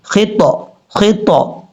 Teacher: تا حروف قلقلہ میں سے بھی ہے، یہاں قلقلہ بھی کرنا پڑے گا